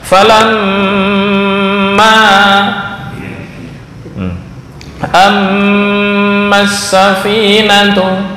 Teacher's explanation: Maksudnya mim dan nun kedua-duanya dalam keadaan bertasydid. Maka dalam mengucapkan diwajibkan memakai gunnah atau suara dengung dengan nyata dan jelas dari pangkal hidung. Falamma, ciri-ciri gunnah ketika ditutup hidung enggak berbunyi sama sekali. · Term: gunnah asliyah